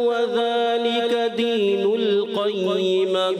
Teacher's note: वज़ाली का एक अलिफ खींचेंगे, ज़्यादा नहीं खींचेंगे